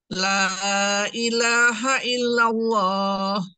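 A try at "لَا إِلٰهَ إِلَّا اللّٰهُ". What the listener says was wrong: Nah, ilallahnya bagus, ilallah bagus tebal. Tetapi la ilahanya, la ilaha illa itu tipis ya. Bukan la ilaha illa, enggak. La ilaha illallah. Terus dilatih ya untuk huruf-huruf tipis. Mana yang pengucapan tipis, mana yang pengucapan tebal, ya harus diperhatikan itu karena sifat huruf ya, sifat yang melekat. Harus tepat antar tebal tipisnya, insya Allah ya.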